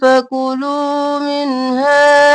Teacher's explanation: فکو جلدی سے اور لو کو کھینچیں گے